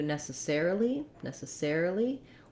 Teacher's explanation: we have a new stress pattern where the air syllable then is going to be the main stress but we will still have secondary stress on the first syllable so in necessary it's long short short short in necessarily it's